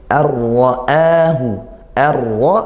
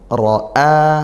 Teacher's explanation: nun sukun bertemu ro ini idgham bila ghunah dibaca masuk ya langsung ke ro dan tanpa dengung ro a nah ini a yaitu mad badal dibaca panjang satu